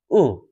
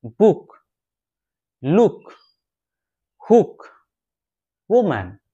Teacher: এই শর্ট উ সাউন্ডটি উচ্চারণ করতে গিয়ে আমাদের জিভটা নিচের দিকে একটু ভেতরে ঢুকবে, বেশি না, একটু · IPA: /ʊ/